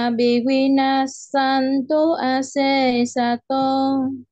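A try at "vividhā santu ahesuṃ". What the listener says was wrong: À, ▁chữ ▁cuối ▁câu ▁mình ▁họ ▁kéo ▁dài ▁ra ▁nha. ▁Vivina ▁santu ▁ase sato. ▁Vivina ▁santu ▁ase sato.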